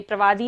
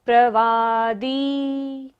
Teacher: द पर बड़े ई की मात्रा है तो लंबा लेंगे, प्रवादी नहीं बोलना है, प्रवादी।